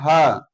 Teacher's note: आप कंठ देखिए, ह, तो ह कंठ से निकलता है, ह, तो इसलिए इसका उच्चारण स्थान कंठ है।